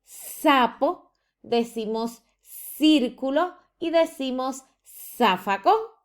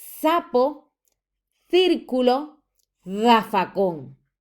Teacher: se presenta el fenómeno del ceseo, donde usted pronuncia con el sonido S